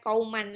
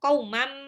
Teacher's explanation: Tanwin ketemu sama mim itu namanya idgham bil gunnah. tanwinnya lebur ke mim, jadi bukan kauman lagi, tapi langsung kaumam